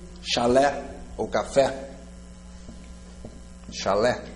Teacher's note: Chalé, sílaba tônica é a última, oxítona termina em E.